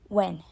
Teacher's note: There is a nasalization in it because the sound e is being affected by the sound n, so it becomes a nasal sound.